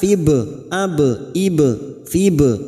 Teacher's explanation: Wala tahinu, nu dhamma diikuti waw sukun 2 harokat, mad tabi'i. Tahinu fib masuk pada huruf ba sukun kita pantulkan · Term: qalqalah sugro